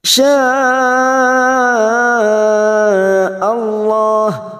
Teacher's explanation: Mad di sini yang bertemu dengan Hamzah dalam satu kalimat namanya mad wajib lima harakat